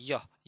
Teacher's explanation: देखो यहाँ पर य का स्थान क्या है, य का देखो तालु, य बोलने पर तालु से आ रहा है ना